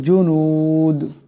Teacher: দাল সাকিন হয়ে যাবে এবং দাল কলকলা হরফের টক্কর খাবে